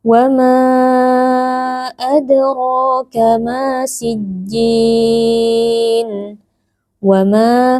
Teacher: Nah, di sini ada mad jaiz munfasil lagi karena ada mad tabi'i, yaitu ada alif yang sebelumnya berharokat fathah bertemu dengan hamzah di dalam dua kata berbeda, yaitu pada kata adraka. Nah, mad jaiz munfasil dibaca panjang 4 atau 5 harokat